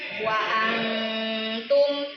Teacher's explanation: Jadi mendengungnya pas mendengung langsung masuk ke makhraj huruf ta. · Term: ikhfa